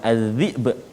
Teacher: bila kita waqaf az-zi'b, ada qalqalah pada huruf ba